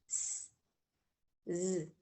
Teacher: Tiene un poquito de vibración. No es lo mismo que el sonido de la S.